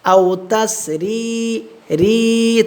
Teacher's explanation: রয়ের নিচে জের হয়েছে, রটা বারিক করে পড়ব